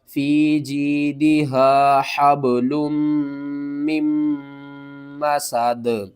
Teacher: یہاں پر ہا کو با کے ساتھ ملائیں گے، با کے اوپر قلقلہ کریں گے، اور لام کو ہم نے میم کے ساتھ ملانا ہے. میم مشدد ہے تو یہاں پر ہم نے غنہ بھی کرنا ہے، اور مشدد لیٹر کو ہم نے 2 بار پڑھنا ہے · اور وقف کی صورت میں نیچے والی دو جو زیر ہیں اس کو آپ نے ختم کر دینا ہے. یہاں پر ہا کو با کے ساتھ ملائیں گے، با کے اوپر قلقلہ کریں گے، اور لام کو ہم نے میم کے ساتھ ملانا ہے.